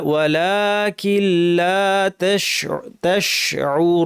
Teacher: নুন সাকিনটা পড়া হবে না, কাফ গিয়ে লামকে ধরবে